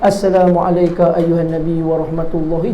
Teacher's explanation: Ayyuhan nun yang bersyaddah. Hukum dia wajibal ghunnah.